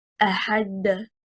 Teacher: Well, whoever reads it wrong and says أحد, they take the stress from a harakat al-hamzah and place it on harakat al-ha